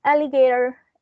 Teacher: the stress is in the first syllable